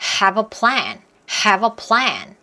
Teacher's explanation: have a plan 이렇게 세 단어처럼 느끼게 하는 게 아니라 한 단어처럼 리듬을 타면서 소리 낼게요. have하고 어가 붙으면 자음과 모음이 탁 하고 붙으면 보통 연음이라고 한다 그랬죠